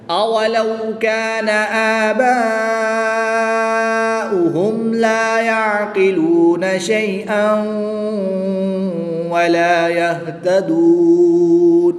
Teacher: الف مدہ کے بعد حمزہ اسی کلمے میں ہے تو یہاں پر مد متصل ہوگی، 3 سے 5 الف تک کھینچ کر پڑھیں گے۔